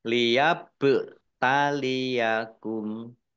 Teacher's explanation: ba sukun bacaan qolqolah dibaca memantul ditampakkan pantulannya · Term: kolkolah